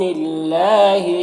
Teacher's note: اللہ کلام سے پہلے نون کے نیچے زیر ہے تو اللہ کلام کو باریک پڑھیں گے، کھڑا زبر ہے، ایک الف کے برابر کھینچیں گے۔